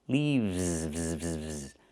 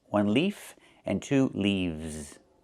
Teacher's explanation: But the plural form is not leaves, it's leaves. We use the letter V and pronounce it VV plus the S making it Z sound like in zebra. Leaves. One leaf with the F sound with no voice.